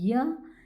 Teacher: इसमें हमारी जिबिया का प्रयोग होता है जो हमार तालू से लगती है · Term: तालव्य